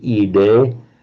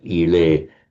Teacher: the phenomenon of a d between vowels becomes a l